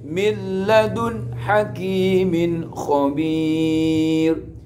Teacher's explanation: nun sukun bertemu dengan lam, harus dibaca idgham, tapi gak boleh gunnah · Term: idgham bila gunnah